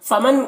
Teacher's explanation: فمن کی نون میں اخفا ہو رہا، نون کی آواز کو ناک میں چھپا کر پڑھیں گے